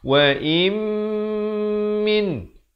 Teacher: Tapi bila datang mim hukumnya idgham bi gunnah. Masuk beserta dengung dua harakat.